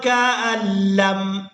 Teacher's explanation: حمزہ کو لام مشدد کے ساتھ ملائیں گے